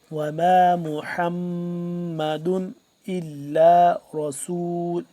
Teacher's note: میم مشدد ہے یہاں پہ ہم غنہ کریں گے